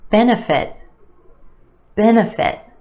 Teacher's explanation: three syllables here our emphasis on the first syllable that add sound benefit benefit that second syllable that's where